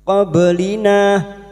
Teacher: Qoblina waqaf di sini kita panjangkan dua harakat.